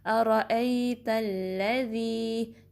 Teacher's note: ذال کو نرمی سے ادا کرنا ہے، زبان کی نوک اوپر کے دانتوں کے کنارے کے ساتھ لگے گی۔ پھر یہ جو آگے یا ہے، یا مدہ ہے کیونکہ اس سے پہلے کسرہ آئی ہے، تو اس کو 2 کاؤنٹ سٹریچ کریں گے، ٹھیک ہے۔